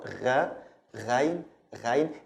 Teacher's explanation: It's written like ayn, but with a dot above, but ghain is pronounced like the French R, gha, ghain, ghain. It's not from the beginning of your tongue, actually it's from the end of your tongue